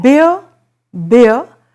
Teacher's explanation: a combination of e and uh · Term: ear